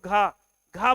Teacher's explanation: घ घ बोलते समय वायु की मात्रा ज्यादा होती है